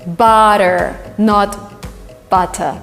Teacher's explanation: when you have double tea it is substituted by d